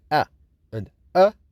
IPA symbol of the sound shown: e, ə